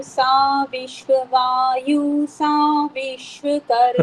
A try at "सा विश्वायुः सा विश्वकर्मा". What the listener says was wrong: विश्वायुः ऐसे बोलना है, यु के बाद में विसर्जनीय भी बोलना है। सा विश्वायुः सा विश्वकर्मा, बोले।